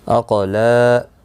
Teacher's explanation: قاف مستعلیہ ہے، پر پڑھا جائے گا، ساکن بھی ہے، اس پہ قلقلہ بھی ہوگا